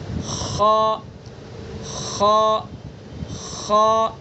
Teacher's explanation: ادنائے حلق یعنی منہ کی طرف والا حصہ